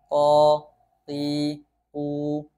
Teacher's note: tadi makhraj huruf q ini pangkal lidah ke langit-langit bagian Luna qo Qi qu tidak ada aliran nafas atau angin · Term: jahar, huruf qaf